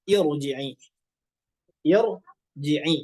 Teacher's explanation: ketika kita menemukan hamzah wasal, ya dibacanya kasroh i bertemu dengan ro yang sukun, maka ro-nya itu berubah menjadi tebal. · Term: ro sukun